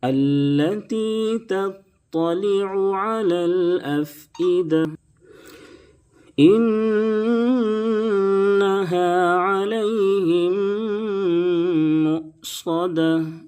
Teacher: انہا نون کے اوپر تشدید ہے، غنہ کریں گے یعنی ناک میں آواز کو روکیں گے